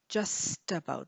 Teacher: notice the t links to the a